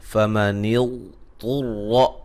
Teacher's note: غاد کو موٹا ادا کریں گے، طا کو موٹا ادا کریں گے، را کو موٹا ادا کریں گے